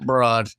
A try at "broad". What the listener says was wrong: Well, it's because you over pronounce the BR in broad, so it sounds way more aggressive. Yeah, you can't do that, bro. You got to say it just chill, like, oh, look at these broads.